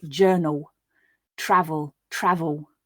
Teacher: Now, depending on the speaker, how fast or clearly they're speaking and the words they're saying, this dark L can become very dark and can be hard to hear at all, or depending on accent, may be more of a woo sound